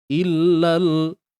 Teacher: pada huruf lam tidak perlu kita tawallud. Tak perlu kita adakan bunyi lebihan.